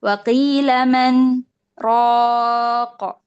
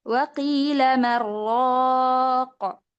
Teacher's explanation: Adapun Imam Syu'bah mengidghamkan nun ke ra.